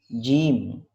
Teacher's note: huruf jim itu lidah kita tempelkan di bagian tengah posisi langit-langit bagian atas